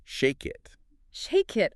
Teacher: In connected speech, that ache sound basically jumps over and attaches to the next word. It jumps over.